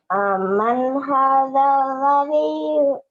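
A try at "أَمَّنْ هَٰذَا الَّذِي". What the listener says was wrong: Amnya ditahan, Aman. Ada mim tasydid ya. Amman hadzal ladzi.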